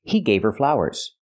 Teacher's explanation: you don't hear the H in her because her is not a stressed word